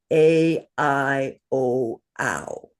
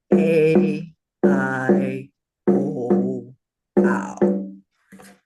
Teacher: these vowels are always long. So we hold them for two beats.